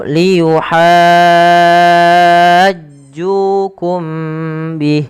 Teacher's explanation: Ju panjangkan 2 harakat karena ia mad tabi'i · mim mati bertemu ba sama dengan atuhadditsunahum, ditahan suara mimnya karena dia ikhfa syafawi